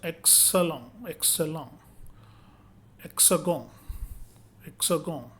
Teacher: The French consonant X has the sound of KS like in English word taxi.